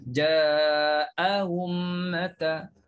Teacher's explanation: Tashil hamzah kedua. Hamzah pertama kena sebut jelas. Clear bunyi hamzah tu. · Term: tahqiq